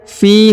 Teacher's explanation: huruf fi dibaca panjang 2 harokat karena di depannya terdapat iya sukun